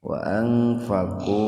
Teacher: Wa Ikhfa, tetapi bacalah ikhfa secara singkat saja, karena sukun nun bertemu dengan huruf 'f' dalam satu kata. Jadi, dibaca secara samar-samar namun singkat.